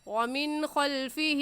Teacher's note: اس نون ساکن پر ہم غنہ نہیں کریں گے اور جلدی سے پڑھ جائیں گے